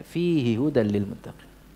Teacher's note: hinya dibaca pendek karena sebelumnya ada Ya Sukun